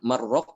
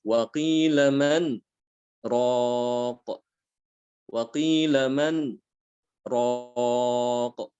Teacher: berhenti pada nun, huruf nun ini, ya, dengan kadar sekitar 2 harokat, ya, tanpa mengambil nafas, ya, dengan maksud untuk meneruskan bacaan. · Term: saktah